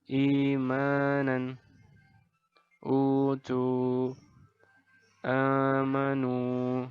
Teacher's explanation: Ini adalah contoh bacaan mad badal, yaitu dipanjangkan 2 harokat.